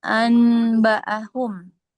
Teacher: masuk ke mim. Iqlab itu nun ketemu ba, nun sukun jadi mim.